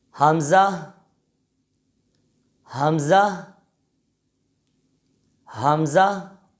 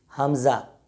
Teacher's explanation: دوسری غلط پڑھنے کی مثال یہ کہ کوئی اس حرف کو ایسے پڑھے، حمزہ، یعنی آخر میں ہا کی آواز ظاہر نہ ہو، یعنی اس حرف میں 4 حروف ہیں، ہا، میم، زا، ہا، تو آخر میں ہا کی آواز بھی ظاہر ہونی چاہیے۔ اگر کوئی ہا کی آواز کو ظاہر نہیں کرتا تو یہ بھی اس حرف کی غلط ادائیگی ہوگی۔